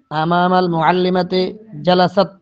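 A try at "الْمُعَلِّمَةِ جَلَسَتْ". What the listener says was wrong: তে না, তি তি, তাজের তে হয় না, তাজের তি হয়, জালাস্তি, জালাসাত। এখানে এখানে হবে জালাসাত, কারণ ফাতেমার রাশেদের বোন আমাল মুআল্লিমাতি জালাসাত, আর তিটা মুআল্লিমাতি, এখানে তে হবে না, কারণ আমরা পড়ছি না যে বিসমিল্লাহ, বা নিচে জের, তো বাজের বি পড়ি না আমরা, তো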